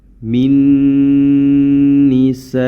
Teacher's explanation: mad wajib muttasil yang mana kita baca dengan boleh empat atau lima harakat